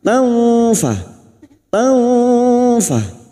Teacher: Fathah tanwin bertemu fa ikfa hakiki. Kita samarkan bunyi fathah tanwin dan mendengung selama 3 harokat siap membunyikan huruf fa. Maka bibir kita membentuk makhraj pada huruf fa.